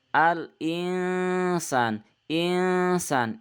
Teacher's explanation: ikhfa samar ini mendengung ya ada huruf nun bertemu dengan huruf Sin